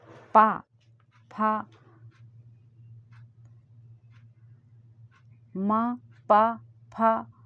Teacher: ये तीनों बोल रहे हैं तो ओठ अपना टच हो रहा है। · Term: ओष्ठ